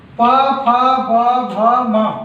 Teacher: ओष्ठ व्यंजन में प फ ब भ म, ये 5 ओष्ठ व्यंजन हैं